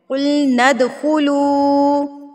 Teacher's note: ند آواز کو روکنا نہیں ہے، نون کو دال کے اوپر مارنا ہے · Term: حروف قلقلہ